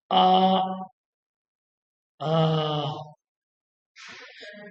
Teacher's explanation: आप कंठ पर हाथ रखें और आप देखिएगा और बोलिएगा आ, आ, ये कंठ ध्वनि है।